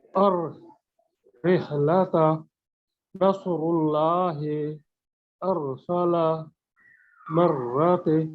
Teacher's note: रॉ जबान की नोक की पुश्त को ऊपर के सामने वाले 4 दांतों के मसूड़ों से लगाकर रॉ का मखरज अदा होता है